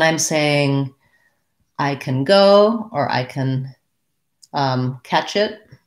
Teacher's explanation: we don't always use our ah cat vow we often will change to a reduced sound so i can becomes i can i can go so i